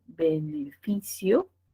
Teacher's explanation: También nos permite tener palabras graves, que tienen la mayor fuerza de voz en la penúltima sílaba